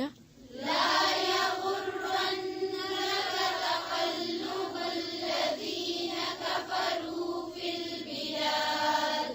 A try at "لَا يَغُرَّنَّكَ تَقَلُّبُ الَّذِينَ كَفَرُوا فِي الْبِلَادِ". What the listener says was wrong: तक़ल्लुबु लाम और बा पे क्या है उसको सही से अदा करें फिर से ला